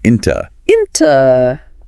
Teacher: the preposition into often gets shortened to inta